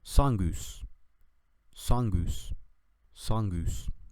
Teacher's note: es pronunciada como una U con tus labios redondeados